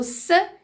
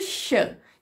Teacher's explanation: Então, aqui a gente consegue perceber a diferença da posição alveolar para a posição pós-alveolar. O XH é um pouco mais para trás e não é exatamente a ponta da língua que faz o movimento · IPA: [s]/[ʃ]